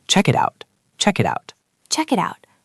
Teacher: So that becomes check it, check it. But then the word it ends with a T and out starts with a vowel. So we link that too. The whole thing becomes one long chain. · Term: double link